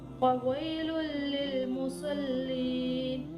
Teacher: تنوین کے بعد لام آ رہا ہے, یہاں پر ادغام ہوگا لیکن بغیر غنہ کے